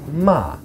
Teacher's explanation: Ma, fourth tone. It starts high and it falls.